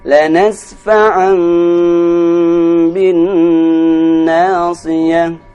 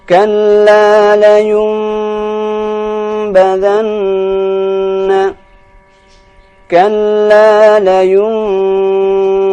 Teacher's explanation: Maka ini juga artinya dia dibaca dengan dengung dan huruf nunnya itu dibaca dengan suara mim.